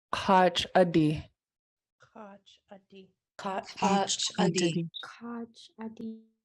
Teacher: So an underlying K is going to move to the back of your throat.